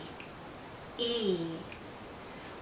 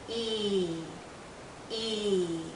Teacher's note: Our lips are very spread, very pulled out, and this is a long vowel sound. So think of your lips being pulled out like the vowel sound is being pulled out because it's a long sound.